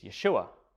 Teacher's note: there's no sh sound in Greek so that became an s